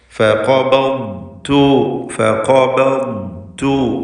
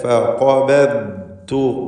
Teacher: ഖാഫിന് തഫ്ഖീമുണ്ട്, മറ്റക്ഷരങ്ങൾക്ക് തർക്കീഖാണ് എന്നത് ശ്രദ്ധിക്കണം.